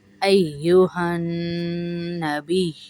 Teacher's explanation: ایو میں سختی کریں گے، ہن ہا کو نون سے ملائیں گے